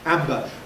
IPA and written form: ˈæmbə (amber)